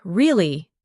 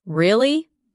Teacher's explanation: when you ask a question like really, your voice goes up slightly at the end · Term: Intonation